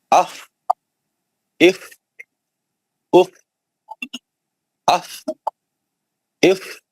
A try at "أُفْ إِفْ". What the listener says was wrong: لمبا لمبا کریے اف اف اف لمبا لمبا کریے